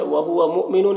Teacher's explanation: یہاں پر حمزہ ساکنہ جھٹکا لگے گا.